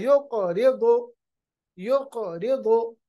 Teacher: क़ाफ जो हर्फ है ये अदा होता है जुबान की जड़ जो है, जुबान का जो आखिरी हिस्सा है, जुबान का जो यानी रूट है, उसको जब ऊपर के तालु के साथ हम मिलाते हैं, अपने ऊपर वाले जबड़ू के तालु के साथ मिलाते हैं तो कौफ अदा होता है।